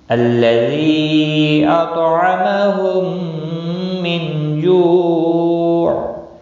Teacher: الذی مد منفصل ہے، 3 الف کے برابر کھینچ کر پڑھیں گے۔